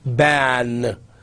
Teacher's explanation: In some languages you don't have certain sounds, like in Arabic you don't have p, they pronounce b